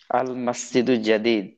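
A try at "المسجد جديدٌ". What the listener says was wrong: জাদিদুন, থামা যাবে না, হরকত উচ্চারণ করতে হবে।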